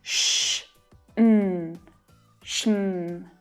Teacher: often the schwa sound is absorbed into the consonant sounds. Because it's unstressed, we hardly hear it at all.